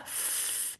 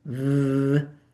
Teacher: So if I have F, f, my vocal cords didn't vibrate. Say f with your vibration, v.